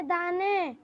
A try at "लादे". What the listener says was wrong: दाने नहीं बेटा, लादे, लादे, ल में आ की मात्रा, द में ए की मात्रा, लादे,